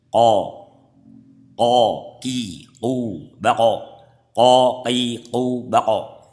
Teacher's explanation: Makhrajnya pangkal lidah bagian bawah. Ya, jadi pangkal lidahnya dinaikkan menyentuh langit-langit lunak. Ko gitu, hampir menyentuh. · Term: qaf